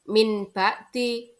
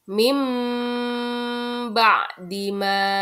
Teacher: adalah Apabila ada nun sukun atau tanwin bertemu dengan huruf ba cara membacanya adalah mengubah suara n menjadi m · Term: bacaan iqlab, bacaan iklab